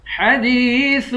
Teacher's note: دال کو یا کے ساتھ ملا کر یا کو بھی ایک الف کی مقدار کھینچ کر پڑھیں گے